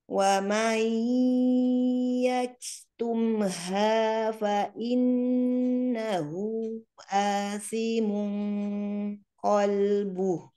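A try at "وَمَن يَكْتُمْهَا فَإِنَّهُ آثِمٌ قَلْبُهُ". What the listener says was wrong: Qalbu tetap mengalir walaupun di akhir kata. Kemudian wa mai lebih dimasukkan ke hidung lagi Wa mai yaktumha.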